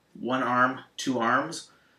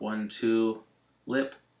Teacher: So arm has vibration at the end, two arms, whereas lip, like 1, 2, lip, no vibration. So two lips has an S sound.